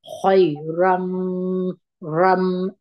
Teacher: دلته بیا ادغام د غونې سره دی، را باندې دغه نون ساکن چې دی د تنوین، دا بیا په دلته د میم په اواز وایو. را به په یوه زور د میم سره یو ځای کی، شونډان به ټینګ ونیسي، او غونه به دوه حرکته جوړ کړي. خیرم رم، دا را په یوه زور د میم سره وجنګوي.